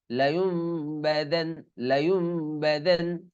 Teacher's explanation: এই নুন উচ্চারণ হবে না, এর নুনটা মিম হয়ে যাবে।